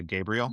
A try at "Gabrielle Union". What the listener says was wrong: You kept saying Gabriel, like.